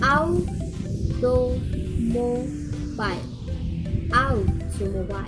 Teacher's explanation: out is primary stress. To and mo is unstressed, and bile is secondary stress · First syllable is a primary stress, and the second and third syllable is unstressed, and the fourth syllable is secondary stress. Auto, automobile, out is primary stress.